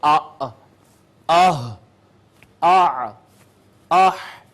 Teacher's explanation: اقصی حلق سے حمزہ ہا